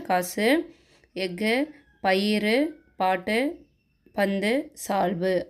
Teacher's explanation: எடுத்துக்காட்டுக்கு காசு, எஃகு, பயிறு, பாட்டு, பந்து, சால்பு அப்படின்ட்டு என்ன சொல்கிறாங்க அப்படின்னா இந்த கடைசியாக இந்த கு, சு, டு, து, பு, ரு இந்த எழுத்துக்கெல்லாம் வர்றப்ப ஓசை வந்து குறுக்கி ஒலிக்குது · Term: குற்றியலுகரம்